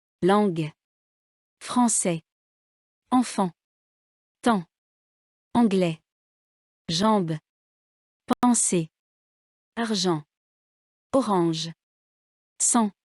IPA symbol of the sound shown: ɑ̃